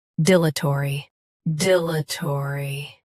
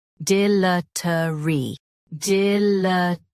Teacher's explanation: US has taw. UK has tuh.